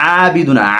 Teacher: আবিদুনা এই আইন হলকের মধ্যখান থেকে